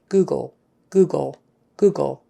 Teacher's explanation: the L of the end is just a quick tongue up behind the teeth